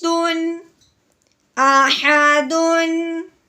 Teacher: تنوین کے بعد آگے واؤ حروف یرملون میں سے ہے تو تنوین پہ غنہ نہیں کریں گے